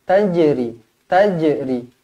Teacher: dibaca melantun hukum dia Qalqalah Sugra